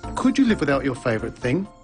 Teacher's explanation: did you notice the pitch of his voice rise at the end of the questions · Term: rising intonation patterns